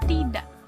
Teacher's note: artikulasi yang dihasilkan oleh pita suara yang tertutup rapat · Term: glotal